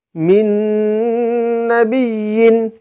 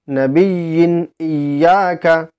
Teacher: তানভীন অথবা নুন সাকিনের আওয়াজকে নাকে তুলে এক আলিফ পরিমাণ গুন্নাহ সহ পড়তে হবে একে এদগামে নাকিস বলা হয় অথবা এদগামে বা গুন্নাও বলা হয়